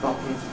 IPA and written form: ˈbʌtn (button)